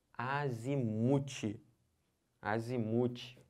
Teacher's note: É o mu que é a sílaba tônica.